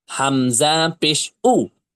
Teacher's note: হামজা পেশ উ, একটা ধাক্কা আছে, একটা শক্ত ভাব আছে, একটা ঝটকা আছে